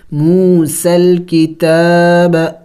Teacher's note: یا کو نہیں پڑھیں گے، اس کے اوپر کوئی حرکت نہیں ہے. موسى الکتاب، تا کو کھینچیں گے، الف کے مقدار کھڑی زبر ہے.